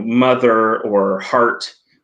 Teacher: uh you know mother or heart um are pronounced with with a very solid r in most american accents or canadian accents